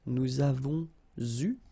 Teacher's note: here you can see that we make double liaison